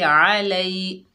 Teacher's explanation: लाम के ऊपर ज़बर है, आगे या साकिन है, ये या लीन है, नरमी और जल्दी से पढ़ेंगे